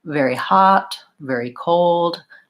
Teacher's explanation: You might have noticed very hot, very cold, that the very is short and quick, and the thing in the blank is long and stretched out because it's stressed